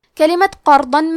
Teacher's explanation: ضاد کی ادائیگی زبان کے کروٹ اور اوپر کے داڑھوں کے جڑ سے ہے۔ ضاد حروف تفخیم میں سے ہے تو ہم ضاد کو بھاری آواز میں پڑھیں گے، کیونکہ اس پہ پیش ہے تو ہم لفظ الجلالہ مطلب کلمت اللہ کے لام کو موٹی آواز میں پڑھیں گے۔